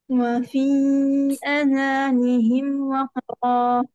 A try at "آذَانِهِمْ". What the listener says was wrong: آذانهم نہیں، آ کو بھی لمبا کریں. آذانهم وقرا.